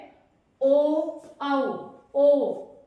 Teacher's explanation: कंठ तालु आगे चलिए या कंठ तालव्य ओ औ ओ तो होठों की शेप बन रही है और साउंड गले से है। यानी गले पर प्रेशर पड़ रहा है। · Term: कंठोस